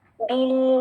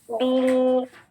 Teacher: یہ ہمزۃ الوصل نہیں پڑھا جا رہا, با کو ملا رہے ہیں ہم لام ساکن سے, لام ساکن بیل, بیل, تھوڑی سی آواز چل رہی ہے